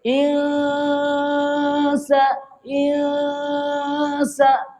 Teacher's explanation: Bacaan dia, lidah kita kena tengah-tengah. Seakan-akan lidah kita tergantung. Seakan-akan bacaannya ada G. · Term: ikhfa haqiqi